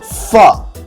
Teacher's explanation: occurs when your lips are touching your teeth, so we call that a labiodental sound, labial referring to the lips and dental referring to your teeth.